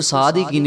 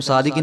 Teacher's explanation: صاد کو موٹا کر کے پڑھیں گے اور ایک الف کے برابر ہم لمبا کریں گے